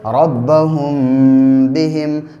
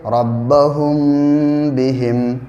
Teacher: میم ساکن کے بعد با آئے تو میم ساکن کو غنہ اور اخفا کے ساتھ پڑھیں گے، اس کو اخفاء شفوی کہتے ہیں۔